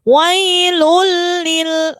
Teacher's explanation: 2, lam sama ro. Ya, idgham bila gunnah bacanya tidak boleh mendengung.